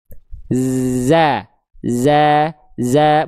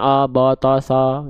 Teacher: Fathah itu dibaca dasarnya dengan vokal A, maka zainya dibaca za. Maka kalau za vokalnya vokal A tipiskan, buka mulut sedikit senyum.